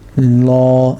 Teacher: when you're saying the name of Allah in Arabic, you're meant to make the lam full mouth. So you're meant to say it with rounded lips. Yeah. So instead of saying la, we're going to say la.